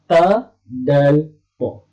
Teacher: Tiga huruf tersebut ketika menyebut makhrajnya berada di hujung lidah sentuh siratan gusi sebelah atas.